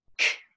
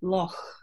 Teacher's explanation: I use a velar fricative there. I say loch. And so I don't explode that sound out. I hiss it out. It's a fricative for me.